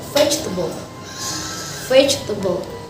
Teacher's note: The stress is located on the first syllable